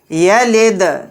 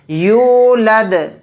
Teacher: دال ساکن ہے تو یہاں پر قلقلہ کریں گے۔